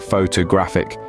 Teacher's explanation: the stress here is on the third syllable so it sounds like photographic with a strong graph